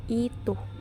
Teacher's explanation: terdapat dua alofon yakni I tinggi atas depan tak bundar dan I tinggi bawah depan tak bundar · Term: fonem I